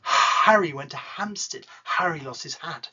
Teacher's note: Try and remember that an H is breathed out. It is pronounced. It's quiet, but it's pronounced.